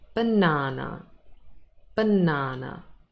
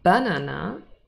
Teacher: we have three syllables here and the middle one is stressed